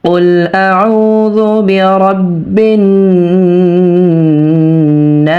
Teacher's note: আমরা নুনে 3 আলিফ টানবো, কেননা জবরের বাম পাশে খালি আলিফ মাদের হরফ, আর মাদের হরফের পরের হরফে এই অক্ফ হয়েছে, এজন্য এটা এই মাদটা মাদ্দে আরজি হয়ে গেছে, আর মাদ্দে আরজি 3 আলিফ পরিমাণ টেনে পড়তে হয়।